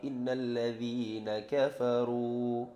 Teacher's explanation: gunnah musyaddadah yang panjangnya bacaannya itu mendengung 2 harakat